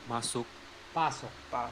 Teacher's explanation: m and p are both bilabial sounds. They are both articulated with your lips together, so it would be easy for one sound to gradually change into the other.